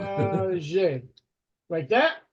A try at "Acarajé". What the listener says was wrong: You missed the A.